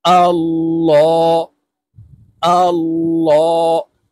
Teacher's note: হামজাহ লাম জবর আল, লাম খারা জবর ল। আল্লাহ শব্দের আগের হরফে জবর আছে, তাই এই লামকে ল অর্থাৎ মোটা করে পড়ব।